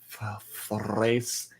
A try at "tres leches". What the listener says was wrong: Tres leches. Tres leches. Tres leches. Tres. Tres. Yeah, you have to do a little bit of a roll.